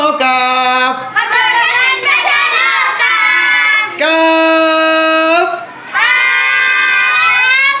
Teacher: জিহ্বার গোড়া একটু আগে বাড়িয়ে, আবার জিহ্বার গোড়া একটু আগে বাড়িয়ে, জোরে বলো, জিহ্বার গোড়া একটু আগে বাড়িয়ে তার বরাবর পরের তালুর সঙ্গে লাগিয়ে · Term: মধ্যখান পেঁচানো কাফ